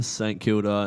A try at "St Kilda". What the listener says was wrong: I'll give you a pronunciation one there. You say St Kilda. St Kilda. Saint. It's not. It's just There's no Saint. It's just St.